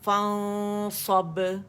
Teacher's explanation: اچھا اگر میں بولوں نا فان تو یہ غلط ہو جائے گا، میرے منہ سے ساری آواز نکل رہی ہے کیونکہ اخفاء حقیقی کرنا ہے، موٹا اخفاء ہے تو صاد کے مخرج کے قریب جانا ہے لیکن نون کو چھپاتے ہوئے، غنہ ریٹین کرتے ہوئے